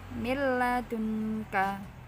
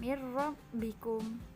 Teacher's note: Membacanya digabungkan tapi tidak dengan dengung. Itu namanya idgham bila gunnah.